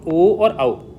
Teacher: अगर इनको उच्चारण करेंगे तो आपका जो होठ है वो गोलाकार आकृति में आएगा।